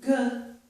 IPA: g